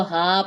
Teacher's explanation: اس کو ہا پڑھیں گے, یا نہیں پڑھی جائے گی · ہا کے اوپر کھڑا زبر ہے, ایک الف کے برابر لمبا کریں گے. اس کو ہائی نہیں پڑھیں گے, غلط ہو جائے گا.